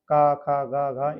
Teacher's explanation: ये का वर्ग वाले जो व्यंजन हैं वो कंठ से उच्चारित होते हैं · क वर्ग सबसे पहले कंठ से उच्चारित होंगे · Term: कंठ व्यंजन